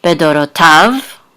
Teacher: And this is an etnachta, so the accent is on the last syllable, bedorotav.